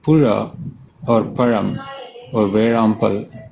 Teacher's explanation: pronounced with rolled up tongue. Ra as in Arabi or run.